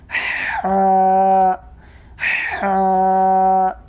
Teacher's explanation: حلق کے بیچ والے حصے سے حا ادا ہوتا ہے